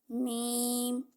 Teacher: यह मीम होठों के खुश्क हिस्सा से अदा होता है